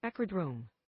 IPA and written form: ˈækrəˌdrəʊm (acrodrome)